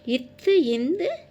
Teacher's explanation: நாவின் நுனி மேல்வாய் பல்லின் அடியில் பிறக்கிறது